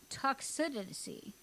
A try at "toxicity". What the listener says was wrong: You said toxicity to start with, and there's no V in toxicity.